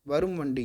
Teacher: இம்மு வந்து அரை மாத்திரை விட கம்மியாக தான் கேட்கும். வரும் வண்டி அப்படி சொல்லலை அப்படி போகிற போக்கில் போயிடும் இம்மு. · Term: மகர குறுக்கம்